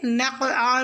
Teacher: نقع میں قاف ساکن پہ قلقلہ ہوگا